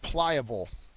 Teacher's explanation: The first syllable is accented.